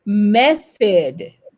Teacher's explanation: vous passez la langue entre les dents du haut et les dents du bas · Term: soft TH